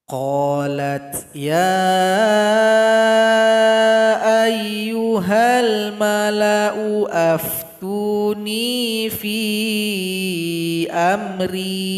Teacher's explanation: Yang kita baca hamzahnya. Hamzah dhamma berjumpa dengan alif, maka dibaca pendek saja.